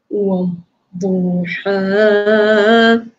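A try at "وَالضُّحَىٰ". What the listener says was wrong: Naik sikit. Naik sikit suara supaya suara kita tidak terlalu rendah dan tidak tenggelam.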